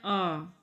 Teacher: जब मुख सर्वाधिक खुला हुआ होता है तब विवर्त स्वर का उच्चारण होता है।